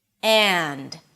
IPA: ænd